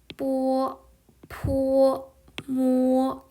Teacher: 그래서 우리는 1성으로 발음을 할 거니까 뽀, 포, 모 이렇게 되겠네요. 윗 입술과 아랫 입술을 붙였다 떼면서 발음을 해주는 아이들입니다